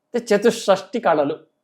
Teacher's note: చతుషష్టి కళలు 64 కళలు అక్కడ బిగుడా లేదు మహాప్రాణం లేదు